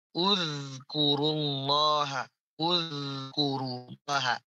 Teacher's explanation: Ini zal matinya jangan sampai kita pantulkan, bukan nudzkuru.